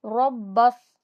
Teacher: यहाँ पर कलकला भी होगा क्योंकि पहला बा साकिन है और दूसरा बा मुतहर्रिक है, और बा पर कलकला होता है। बा को स्वाद से मिलाएंगे, स्वाद हैवी पढ़ा जाएगा, मोटा हुरूफ है।